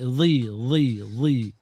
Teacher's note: bila baris bawah ni dia akan rendah sikit bunyi dia daripada baris atas dan baris hadapan